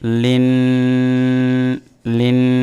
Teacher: নুনে মিমে তাসদিদ গুণনা করা ওয়াজিব এক আলিফ গুণনা করতে হবে